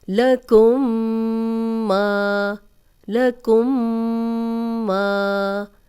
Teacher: ما الف مدہ ہے، 2 حرکات لمبا بھی کریں گے